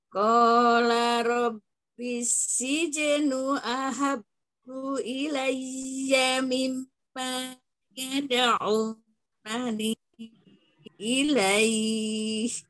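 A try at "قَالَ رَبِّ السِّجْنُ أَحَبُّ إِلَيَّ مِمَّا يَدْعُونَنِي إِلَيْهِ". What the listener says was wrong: Ya, mim tasydidnya jangan terburu-buru, Eyang. Ilaiya mimma, ya. Tahan sempurna.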